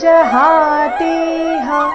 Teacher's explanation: ಚರಣದ ಕೊನೆಗೆ ಹ ರಸ್ವ ಜಹಾತಿಹ ಅಂತ ಅದನ್ನ ದೀರ್ಘ ಮಾಡಬಾರದು